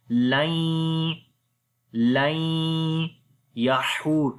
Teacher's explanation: Nun and ya both we read together with gunna, so we say lain yahur. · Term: idgham with gunna